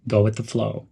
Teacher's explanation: Link go and with. Go with the flow. Stress the word flow.